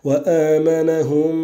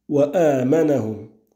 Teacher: madd al-badal pour ta parole wa amanahum avec la prolongation du hamza